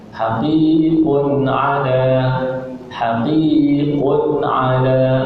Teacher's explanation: Maka namanya izhar halqi. Cara bacaannya iaitu kita jelaskan bunyi tanwin tanpa didengungkan.